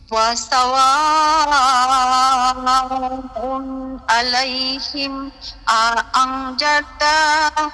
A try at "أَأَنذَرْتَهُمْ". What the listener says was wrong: এই তার মধ্যে টান দিছেন কেন أنذرتهم